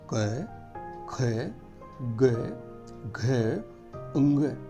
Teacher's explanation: आपकी जिह्वा कंठ को ढकती सी महसूस होगी, जैसे अंदर खींच रही हो कंठ की तरफ।